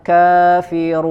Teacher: Di sini ada huruf nun, maka sempurnakan kafirun, ya. Huruf nun punya sifat gunnah, ya, maka harus ada dengung sedikit ke hidung, ke rongga hidung.